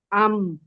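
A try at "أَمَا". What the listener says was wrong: حمزہ کو آپ آئین کی صورت میں کیوں ادا کر رہی ہیں بیٹے؟ اما. اما دیکھیں نہ کہیں میں بھی کوئی بھی حرف موٹا نہیں ہے. سب باریک ہے سب فلیٹ ہے. اما. اما. آپ کے ہونٹوں میں بھی ہلکی سی وائبریشن فیل ہوگی. آپ کے ناک میں بھی تھوڑی سی وائبریشن فیل ہوگی.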